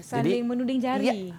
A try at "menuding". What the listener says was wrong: Menuding. Bukan menunding. Menuding.